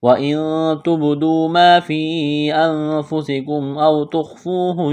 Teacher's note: نون ساکن کے بعد تا ہے، حروف اخفا ہے، غنہ کریں گے، آواز ناک میں چھپائیں گے